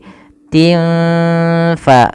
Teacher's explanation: Kemudian belafal tin fa ada bacaan kita namakan dengan ikhfa hakiki, yaitu cara membacanya samarkan suara tinnya kepada huruf fa dan tidak boleh diperjelas, tidak boleh dibaca tin fa, tapi tin fa sambil kita dengungkan atau kita samarkan ke huruf fa-nya.